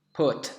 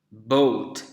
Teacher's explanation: bunyi P adalah bunyi yang tidak bergetar pita suara kita. Sedangkan bunyi yang B itu bergetar pita suara.